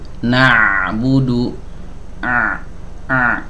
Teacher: ngalir ya teman-teman bisa dengar ya ada aliran suaranya naudu a a Nah itu aliran suara yang itu itu namanya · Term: tawassut